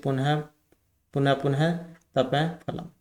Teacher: भेद उपद्य मान जब विसर्ग के बाद प फ होते हैं तब अर्ध विसर्ग उच्चारण होता है